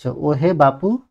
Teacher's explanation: এই যে উ ধ্বনিটাকে আমরা বারবার টেনে লম্বা করছি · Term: প্লুত স্বর